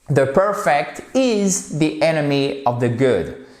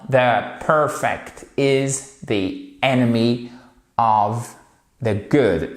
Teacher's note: votre accent tonique porte sur la première syllabe de Perfect